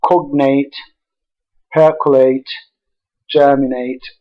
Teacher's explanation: words like cognate percolate germinate which are stressed on the first syllable were stressed by our learners on the last syllable that is